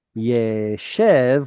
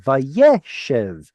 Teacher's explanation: But look, the stress moved from the sheen to the yod.